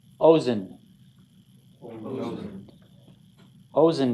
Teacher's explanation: he's telling you the accent's on the first syllable